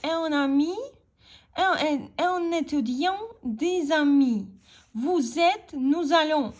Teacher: І ось тут маємо ще одну з важливіших засад вимови французької мови – це поєднання останньої приголосної і першої голосної, які належать до однієї ритмічної групи. Наприклад, «un ami», «un étudiant», «des amis», «vous êtes», «nous allons».